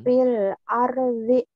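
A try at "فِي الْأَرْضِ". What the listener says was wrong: Nah, Ibu di R-nya jangan pecah ya. Bulat fil arb di tuh fil arb di kemudian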